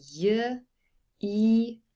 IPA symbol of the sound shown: j